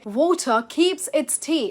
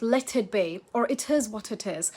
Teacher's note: Even in phrases like let it be or it is what it is, every T stays a clean, light T. Not hard, just clearly there.